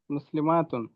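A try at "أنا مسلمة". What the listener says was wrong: আনা মুসলিমাতুন, মাদ নাই।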